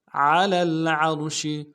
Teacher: ساکن غنہ نہیں ہوگا، عین کو را کے ساتھ ملائیں گے، عین کو موٹا ادا کریں گے، را کو موٹا ادا کریں گے